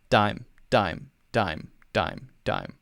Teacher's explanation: But one is the way that D is pronounced in the Indian English pronunciation and the, for example, American English pronunciation. If someone says dime in America, the tongue is touching the roof of the mouth right behind the teeth.